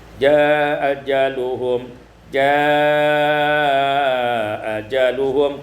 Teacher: isqatul hamzatul ula, dibuang hamzah yang pertama menjadi jaa ajaluhum, jaa ajaluhum, qasar dan tawassut.